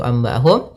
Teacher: nun mati bertemu ba maka bacaan iqlab suara nunnya kita ganti dengan suara huruf mim